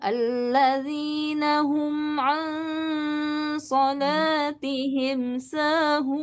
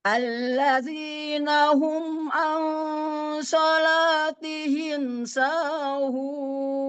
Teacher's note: datar, akhirnya Ya, tinggi. awal datar, akhir tinggi